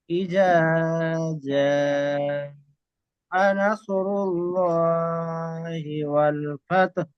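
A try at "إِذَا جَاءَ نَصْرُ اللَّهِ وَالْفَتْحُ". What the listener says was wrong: তাহলে এই জাটা একটু টান করতে হবে, বুঝতে পেরেছেন?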